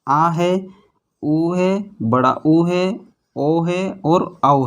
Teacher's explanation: जिन स्वर के उच्चारण के समय जीभ के पीछे वाले भाग पर विशेष बल दिया जाता है उन्हें पश्च स्वर कहते हैं